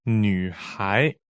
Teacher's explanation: 女 is third tone. 孩 is second tone.